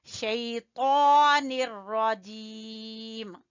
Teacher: शैतान खींचेंगे खड़ी जबर की वजह से